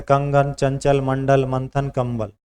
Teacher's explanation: वायु केवल नाक से बाहर निकलती है। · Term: अनुस्वार